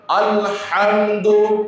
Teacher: হা এটা কণ্ঠনালীর মধ্যখান থেকে উচ্চারণ হয়, এটাকে যদি আমি কণ্ঠনালীর শেষ ভাগ শুরু থেকে উচ্চারণ করি তাহলে আলহামদু শব্দটির যে অর্থ আল্লাহর প্রশংসা এটা থাকলো না, এটার ব্যাড অর্থ হয়ে যাবে, খারাপ অর্থ হয়ে যাবে, সবচেয়ে পচা কাপড়।